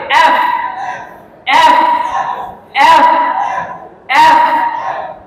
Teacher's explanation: নিচের ঠোঁট, নিচের ঠোঁট উপরের দাঁতের সাথে লাগবে, মাঝখান দিয়ে বাতাস বের হবে।